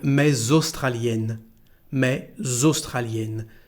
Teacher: we have, if you want, a connection between mais and the following word starting with the vowel